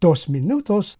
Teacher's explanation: I don't pronounce either of these written r’s, the first one because it's before a consonant, the second because it's at the end. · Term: non-rhotic accents